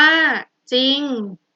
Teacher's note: เวลาอ่านจะออกเสียงเฉพาะพยัญชนะตัวหน้าและไม่ออกเสียงตัวรอเรือ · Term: คำควบกล้ำไม่แท้